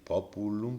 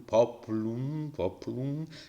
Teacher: Esta U casi no se pronunciaba y entonces desaparece. Desaparición de la vocal pre, o en este caso post, tónica, porque la tónica es esta, ¿vale?